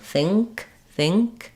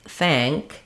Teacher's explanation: the I is high and in the front and the a of thank is more open and in the front um but they also have the tongue lifting in the back